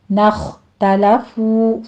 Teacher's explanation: اخْتَلَفُوا پہلے غنہ واجبہ ہے، آگے زی میں یا مدہ اور آگے خو کو پر پڑھیں گے